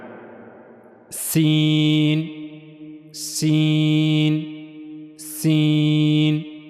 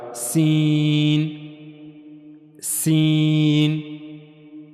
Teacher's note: تو زبان کی نوک کا جو اوپر والا حصہ ہے یہ 2 اگلے دانتوں کے اندرونی حصے کے ساتھ جا کر ملے گا نہیں، بلکہ تھوڑا سا فاصلہ رہے گا زبان اور دانتوں کے اندرونی حصے کے درمیان، تو وہاں سے سین ادا ہوگا، سین، سین۔